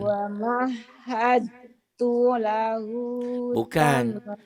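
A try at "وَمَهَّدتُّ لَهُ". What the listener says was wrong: Bukan wa mahadatu. Kandalnya jadi hilang. Huruf mati ketemu huruf bertasdid. Iya jadi wa mahatu. Dalnya hilang. Kedengarannya masih ada adalnya.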